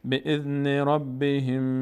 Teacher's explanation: روی میم مقداری توقف میکنیم چون تشدید داره.